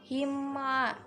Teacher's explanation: mim sukun bertemu dengan ain, idhar syafawi dibaca jelas